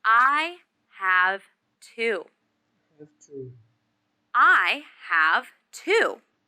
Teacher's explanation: this question is about quantity so the stress should be on the number